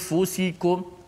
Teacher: Selepas kita sebut hamzah a, okey, mulut kita, lidah kita jangan pergi makhraj nun. Yang pergi nun biar kerja hidung saja. Dengung dekat hidung. · Gunnah hanya pada nun. Bila kita sebut huruf fa, gunnah dah tidak ada lagi. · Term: ikhfa